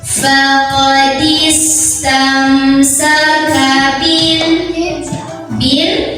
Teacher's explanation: Ada idhar syafawi karena ada mim sukun ketemu sama sin, maka mim sukunnya dibaca jelas.